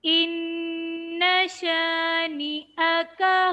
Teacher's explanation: ایک الف کی مقدار غنہ، نون مشدد پہ. اِنَّ شَانِئَكَ، الف خالی سے پہلے والے حرف کے اوپر زبر، الف مدہ.